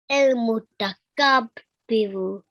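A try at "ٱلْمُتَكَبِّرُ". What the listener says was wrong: Kabbiru. So you don't have a pause in the middle. The whole section has to be said together. Al-Mutakabbiru.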